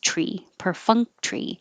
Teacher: t-o-r-y can get squished to just tree per funk tree and you're not releasing the k per funk tree i don't have to have the k there · the t-o-r-y can get squished to just tree per funk tree and you're not releasing the k per funk